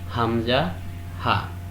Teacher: These 2 letters are pronounced from the first part of the larynx.